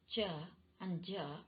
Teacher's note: post alveolar in which the tip or the rims of the tongue articulate with the rear part of the alveolar ridge